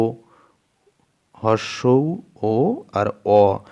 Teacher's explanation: আর কুঞ্চিত দেখো ও, হর্ষৌ ও আর অ, এই তিনটে স্বরধ্বনি উচ্চারণ করো, দেখবে আমাদের যে ঠোঁট দুটো আছে ঠোঁট দুটো একটু যেন মুড়ে মতো যাচ্ছে, কুঞ্চিত হয়ে যাচ্ছে, কুঁচকে যাচ্ছে। ওই জন্যে এই তিনটে স্বরধ্বনিকে হর্ষৌ ও আর অকে বলা হচ্ছে কুঞ্চিত স্বরধ্বনি।